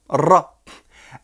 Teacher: Le R arabe, le R roulé, le Ra, n'est pas comme le R français, mais se prononce plutôt comme le R espagnol, de façon roulée, Ra.